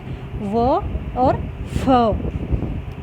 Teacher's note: दंतोष्ठ्य जिसमें दांत और ओष्ठ दोनों का प्रयोग किया जाता है, वे होते हैं व और फ।